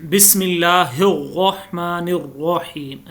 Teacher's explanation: अभी मैंने रा को मोटा करके पढ़ा है